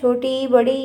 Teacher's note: छोटी ई बड़ी ई का कहां से उच्चारण होता है तालू से